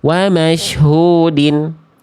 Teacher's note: dalnya berharokat kasroh tain ya. Jadi dibacanya dengan vokal konsonan in menjadi din.